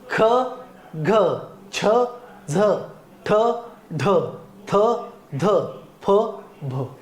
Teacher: म्हणायचं कळलं यांचा उच्चार करताना ह चा उच्चार केला होतो किंवा हवा जोरात फुफुसावाटे एकदम बाहेर फेकल जाते त्याला महाप्राण म्हणतात